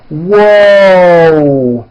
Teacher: there's a w sound at the beginning of that but there's also a hidden W sound at the end whoo and my mouth is also very forward